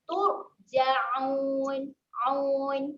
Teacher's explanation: Okay, seterusnya huruf ain. Keluarkan makhraj huruf ain di tempatnya iaitu tengah kerongkong.